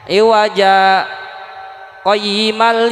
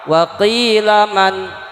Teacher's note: saktah berhenti sebentar dengan menahan nafas kira-kira 2 harokat